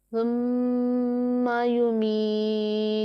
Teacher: मीम मुशद्दद है तो मीम मुशद्दद में गुन्ना होगा। और या साकिन है, उससे पहले ज़ेर है तो या मद्दा हुआ, इसे एक अलिफ के जितना लंबा करके पढ़ेंगे।